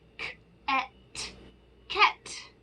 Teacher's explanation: We're going to change the short A in the middle, which says ah. Let's change it to a short E, which makes the sound eh.